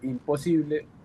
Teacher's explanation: Y por ejemplo, en español no tenemos permitido eh que la N esté antes de una P o de una P o al menos el sonido de la N no está antes de una P. Por eso, aunque el prefijo es in, cuando lo agregamos a una palabra como imposible, lo volvemos con m